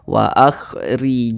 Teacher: Kemudian kemudian di sini ada huruf ra. Huruf ra ini dia memiliki tanda baca kasrah, maka huruf ra dibaca tipis, dibaca tarkik.